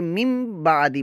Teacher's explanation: नून साकिन को मीम से बदल कर इकलाब करेंगे, यानी कि गुन्ना करके हम पढ़ेंगे। तो ये पढ़ा जाएगा मिन बादी से बन गया मिम बादी।